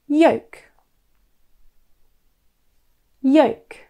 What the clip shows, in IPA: jəʊk